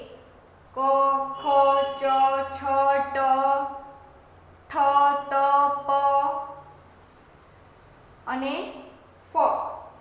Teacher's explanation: અઘોષ ધ્વનિ ઉચ્ચારણ સમયે નાદતંત્રી મહત્વનો ભાગ ભજવે છે. ઉચ્ચારણ સમયે નાદતંત્રી અલ્પ માત્રામાં કંપે ત્યારે તે અઘોષ ધ્વનિ કહેવાય છે.